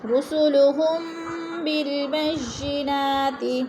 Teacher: میم ساکن کے بعد حرف با گیا تو ادھر اخفاء شفی ہو رہا ہے، غنہ کریں گے، ناک میں آواز لے جائیں گے